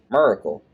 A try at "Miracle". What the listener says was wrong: Did you just pronounce every single letter in there? No, it's not.